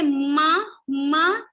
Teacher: when we say ma ma we have little vibration on our nose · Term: nasal consonants